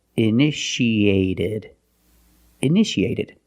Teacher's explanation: second T is between vowels, so we pronounce it like a fast D.